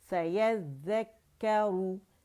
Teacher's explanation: اور اس میں کیونکہ شدہ ہے تو اس میں سپلٹس آف سیکنڈ کا پاز آئے گا, لیکن ذیل میں نہیں آئے گا, باریک ہے دونوں. سیذکرو را رو مخفف میں موٹی ہے